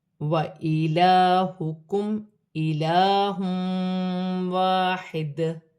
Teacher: وَإِلَٰهُكُمْ إِلَٰهٌ وَاحِدٌ لا الہ الا هو الرحمن الرحیم۔ لام پر کھڑی زبر ہے، ایک الف کی مقدار کھینچ کر پڑھا جائے گا، میم ساکن میں غنہ نہیں ہوگا۔